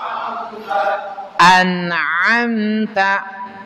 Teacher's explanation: Hamzah dari Aqsal halq ain dari wasul halq pengucapan dari Hamzah langsung ke ain